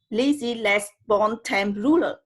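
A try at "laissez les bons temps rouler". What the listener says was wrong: So I think it's laissez, les, bon, temps, rouler. So you don't, in French, you don't pronounce the S.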